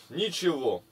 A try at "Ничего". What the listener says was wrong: Ничего. Ты неправильно ударение делаешь.